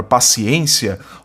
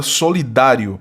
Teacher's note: ambas trazem sílaba tônica na penúltima sílaba são palavras paroxítonas